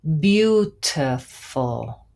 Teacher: have our main stress in the first syllable